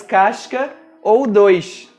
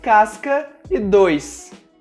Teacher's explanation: No estado do Rio de Janeiro e em algumas partes da região Nordeste, a letra S é pronunciada com o som sh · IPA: /ʃ/